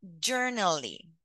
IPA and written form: ˈdʒen.ə r.əl.i (generally)